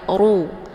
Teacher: Tatafakkaru, ru hukum bacaannya adalah tebal yaitu tafkhim karena ra ini berharokah zumah dengan posisi pangkal lidah terangkat ke langit